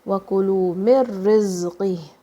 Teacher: This is idgham, which means meme is joining with ra.